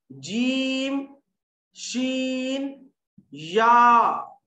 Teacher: बीच जबान और उसके मुकाबिल बीच तालू से 3 हरूफ जीम, शीन, या गैर मद्दा निकलते हैं। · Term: शजरी